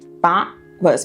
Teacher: depois do bought, a gente não linka com was. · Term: glottal stop